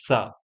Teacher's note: इस सा को बोलते समय हमारी जीवा दंत को स्पर्श करती है, तो सा। और इस शा को बोलते समय हमारी जीवा मूर्धा से स्पर्श करती है।